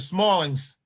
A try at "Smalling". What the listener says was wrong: Oh, by the way, it's Smalling, no S on the end. The S is silent.